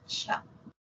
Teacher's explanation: la africada inicia como cierra como ficativa termina como ficativa y es la palatal sorda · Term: africada palatal